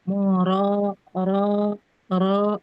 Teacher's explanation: Maksudnya sedang dalam posisi tebal. Ketika posisi tebal, mulutnya tidak monyong, ya, tidak monyong, hanya dibuka saja. Terus apa yang membuat dia bunyinya dari O? Karena pangkal lidah naik. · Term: huruf tebal